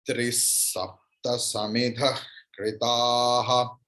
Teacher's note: If after visarga there is sakara, means Saraswati sakara, then visarga's pronunciation will be Saraswati sakara, means dantasa.